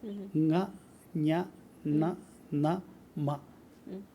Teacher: കാറ്റ് കുറച്ചു വായിൽ കൂടെയും കൂടുതൽ മൂക്കിൽ കൂടെയാ പോകുന്നത് ഞ ന മ മൂക്കിൽ കൂടെ പോകും കാറ്റ് പോകുന്നത് ഈ മൂക്കിൽ കൂടെ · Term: നേസൽ സൗണ്ട്